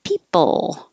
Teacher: keep your lips back for the final L, because if you round your lips, it'll sound like peepo. So if you smile, that helps keep your lips back.